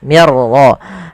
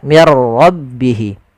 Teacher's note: Ra itu punya sifat namanya sifat takrir, tapi takrirnya hanya satu saja, tidak boleh berulang. Mir ra, enggak, tapi langsung saja mir rabbihi.